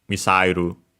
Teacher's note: So yeah low high low low low.